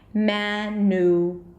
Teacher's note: the middle syllable is going to be a really short U sound